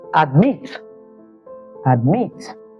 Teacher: the stress lies on the second syllable and there is a short vowel before the consonant